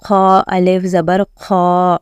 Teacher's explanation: kha is a heavy letter. So with the alif also it should sound heavy